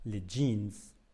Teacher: jeans is spelled with a J but in fact it's two consonants D and J